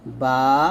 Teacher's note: দুই ঠোঁটের ভিজা জায়গা হতে একটি হরফ উচ্চারিত হয় বা